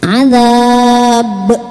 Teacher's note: Terus baknya juga namanya qalqalah kubro, maka pantulannya lebih besar